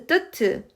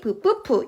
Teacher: 폐에서 나온 공기흐름을 완전히 막았다가 터트리면서내는 소리입니다. 완전히 막았다가 터트리는 소리를 파여름이에요. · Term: 파열름